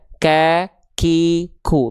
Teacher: Hams itu artinya mengalir nafas, tapi untuk huruf kaf dia pengkhususan nafas yang keluar bukan mengalir, tapi hanya berupa percikan-percikan nafas saja.